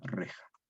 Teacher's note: la J actual, la J que suena velar sorda